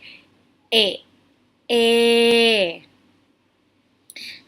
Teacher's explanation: middle column so we have the sound of a this sound your tongue would be position in the front but it is leveled in the middle your jaw is partially open not fully open but not closed at the same time